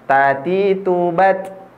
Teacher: ketika menemukan huruf ta mati atau ta sukun ya, ini harus ada desisan yang keluar karena salah satu sifatnya adalah hamas.